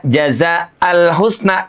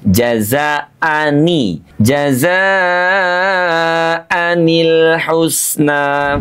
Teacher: Maka untuk menyelamatkan kedua pertemuan huruf sukun ini jazaan dengan alhusna salah satunya harus dihidupkan dengan menambah bunyi harakat kasrah pada nun sukun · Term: harokat kasrah